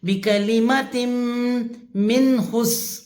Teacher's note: بکلمت من حس، میم زیر نون من، یہاں پہ غنہ نہیں کرنا کیونکہ نون ساکن کے بعد حروف ہلکی یعنی کہ ہا آ رہا ہے، تو یہاں پہ ہم نے اظہار کرنا ہے، غنہ نہیں کرنا.